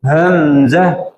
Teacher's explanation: حمزہ ہا یہ حلق کے سٹارٹ سے نکلتا ہے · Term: حلقی